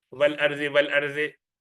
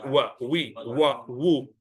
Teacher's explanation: All the W's, all waw in Quran are W sound, not V. You don't say V.